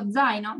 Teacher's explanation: En cambio, cuando yo digo zaino, zaino quiere decir mochila. Cuando yo digo zaino, tengo que hacer como una DZ